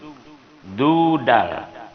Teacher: Makhrajnya di ujung lidah dengan urat gigi yang di atas. Ujung lidah dengan urat gigi yang di atas.